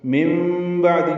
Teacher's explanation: نون ساکن کے بعد با آنے کی وجہ سے اقلاب ہے، اس لیے چھوٹی میم لکھ دی گئی، نون کی جگہ میم پڑھیں گے